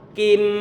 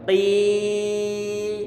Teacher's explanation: Bacaan yang salah. Karena yang dipanjangkan sampai 5 harokat bukanlah dari segi mimnya ini, tetapi adalah suara kasrohnya. Sehingga perlu kita baca model yang kedua ini.